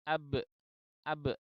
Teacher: Membaca salahnya adalah ab, ab, ab. Jadi setelah bibir itu dibuka, itu ternyata pangkal tenggorokan itu menghasilkan bunyi hamzah mati. Ya, karena pita suaranya tertutup atau terkatup.